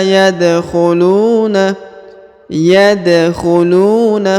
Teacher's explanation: huruf da berharakat sukun maka dia dibaca pantul atau Qalqalah karena huruf da yang berharakat Sukun adalah salah satu daripada huruf-huruf